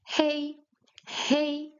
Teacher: In Chinese the h is voiced.